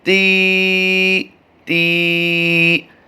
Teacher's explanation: یاد رہے طا کی آواز نہیں آنی چاہیے، اس میں تا کی آواز آئے گی